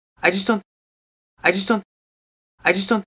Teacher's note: Also, the vowel in just, hardly there. I would write that as a schwa. Just. So the whole word just becomes just so fast.